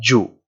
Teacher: the sound is going to be short and rounded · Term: dumma